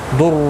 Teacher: ضاد مستعلیہ ہے، پر پڑھا جائے گا۔ در را پیش کی وجہ سے پر پڑھا جائے گا۔ رو واو مدہ ہے، ایک الف کی مقدار کے برابر کھینچ کر پڑھیں گے۔